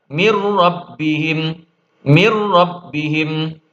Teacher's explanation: maka nun sukun atau tanwin menjadi hilang lebur ke huruf selanjutnya yaitu huruf ro atau huruf lam. Contohnya min rabbihim dibaca mirrabihim mirrabihim. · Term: idgham bila ghunah